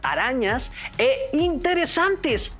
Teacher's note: la sílaba ra de arañas y san de interesantes tienen una mayor intensidad y tono en sus pronunciaciones, aunque en la escritura no reciben marcas gráficas, pese a ser las sílabas tónicas.